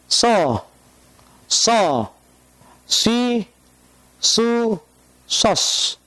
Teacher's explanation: ujung lidah antara dua buah gigi yang atas dan yang bawah. Dan lidah kita terangkat ke atas. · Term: huruf shad